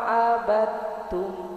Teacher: Lafat abadtum dal dimasukkan ke ta ya Bu ya. Jadi Bu bacanya tidak abadtum, tidak seperti itu, langsung dimasukkan ke ta karena idgham mutaqaribain, berdekatan makharijul hurufnya ya Bu ya.